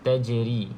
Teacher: Tajri, jim salah satu daripada 5 huruf qalqalah, maka kita lantunkan sedikit. Di sini qalqalah sughra, lantunan sedikit saja, tak perlu kuat. Tajri. Dia smooth saja.